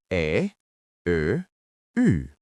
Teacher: These are light sounds made at the front of your mouth. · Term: Front Vowels